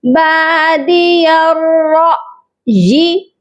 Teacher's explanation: اس کے بعد ہے را حمزہ زبر را، یہاں پر ہم جھٹکا دیں گے کیونکہ یہ الف نہیں ہے بلکہ حمزہ ہے اور وہ بھی ساکن والا۔ را کو جب حمزہ ساکن کے ساتھ ملائیں گے تو جھٹکا دیں گے